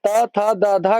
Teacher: ध का उच्चारण स्थान दंत होता है।